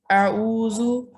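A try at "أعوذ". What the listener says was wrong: आऊ नहीं, आइन है, आइन अदा करना है।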